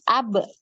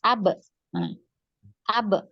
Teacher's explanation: makhraj dari huruf ba ini adalah di bibir ya, di bibir atas dan bibir bawah bertemu ya